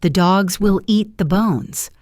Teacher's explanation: The little words the, will, and the are squeezed between the main beats.